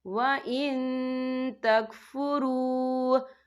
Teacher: یہاں نون ساکن ہے، نون ساکن کے بعد جو ہے تا ہے، اور تا جو ہے اکفا کا ورڈ ہے، تو ہم یہاں اکفا کریں گے، نون ساکن کی آواز کو ناک میں چھپائیں گے۔